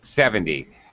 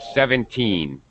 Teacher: we say 70 much more stress in the beginning 70 but normally when we say 17 we say we say it with the stress on the last syllable